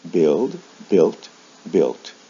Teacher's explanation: build for verbs like build a final t is added or the final sound is changed from a d to a t the original vowel sound doesn't change